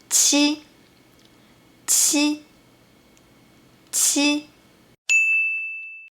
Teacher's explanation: The difference between 鸡 and qi is that qi is aspirated and ji is not. So when pronouncing qi, you need to exhale more strongly.